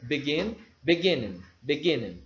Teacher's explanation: a última sílaba, no caso, gin, ela é forte, ela é tônica.